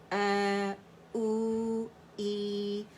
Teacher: حمزہ کہاں سے؟ فار throat سے نکلے گا